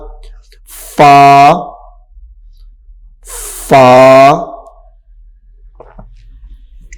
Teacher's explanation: اوپر والے دانتوں کا کنارہ اور نیچے والے ہونٹوں کا جو تر حصہ ہے یعنی اندر والا حصہ، اوپر والے دانتوں کے کنارے کو وہاں پہ لگانا ہے۔